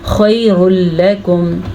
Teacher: ज़ालिकुम खैरुल लकुम, अच्छा जी, ज़ालिकुम खैरुल लकुम पे इदगाम बिल्ला गुन्ना का कायदा हो रहा है क्योंकि तनवीन के बाद लाम आया हुआ है, तो यहाँ पे तनवीन जो है उसकी आवाज़, नून तनवीन की आवाज़ ख़त्म हो जाएगी, बल्कि उसको ऐड किए बगैर हम लाम को उठा लेंगे